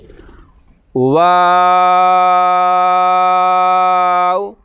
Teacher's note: ہونٹوں کو گول کرنے سے واو ادا ہوگا۔ ہونٹ گول کریں گے اور 5 الف لمبا کریں گے، یعنی کھینچ کے ادا کریں گے۔ واو، آخر میں ہونٹ گول رکھیں گے۔